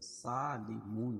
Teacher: واو ساکن سے پہلے پیش ہو تو واو مدہ اور وقف کی حالت میں یہ مد حارث وقفی ہوگا